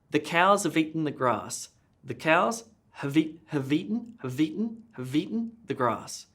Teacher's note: Cows and grass, as we'll find out in a second, are meaningful words. So they have more stress. And those little grammatical words like the and have start to sort of almost disappear, or they're really stuck together there.